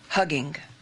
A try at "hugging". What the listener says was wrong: Hugging. Don't pronounce that second G.